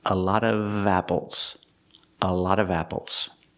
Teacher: if it's before a vowel, you have to pronounce the V sound.